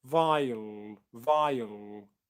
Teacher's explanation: Okay, so you might hear vile, vile, vile, where you don't get a schwa sound, you just get a long dark L